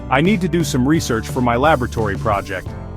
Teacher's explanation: notice the emphasis on the first syllables research and laboratory